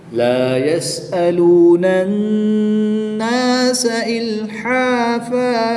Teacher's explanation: دو زبر کی تنوین کو وقف میں الف مدہ سے تبدیل کریں گے